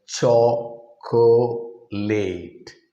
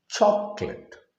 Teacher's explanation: o in the middle is dropped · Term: dropped syllable